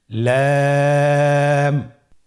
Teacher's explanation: লাম হরফটির মাখরাজ হলো জিহ্বার আগার কিনারা উপরের দাঁতের মাড়ির সঙ্গে লাগিয়ে উচ্চারিত হয়।